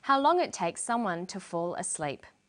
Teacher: She uses falling intonation. This is how we know the list is finished. We generally use falling intonation for the last item in a list.